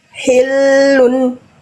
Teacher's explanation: Hi jangan khi, jangan ada kerasak-kerasaknya. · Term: H kecil